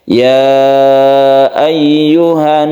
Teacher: karena dia itu bertasydid maka dibacalah ini ghunah · kalau tasydid nun ini kita dengungkan, artinya ini disebut gunnah